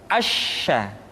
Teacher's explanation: Sya dikeluarkan dengan cara mengangkat tengah lidah kita ke langit-langit. Asya. Dan sifat yang dimiliki oleh huruf sya yang paling nampak adalah apa yang disebut dengan sifat at-tafashi, yaitu menyebarnya angin di dalam mulut kita.